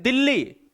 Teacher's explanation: दिल्ली नाक का इस्तेमाल ही नहीं है, तो नाक बंद करके भी देख लिया, नहीं है। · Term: निर्नुनासिक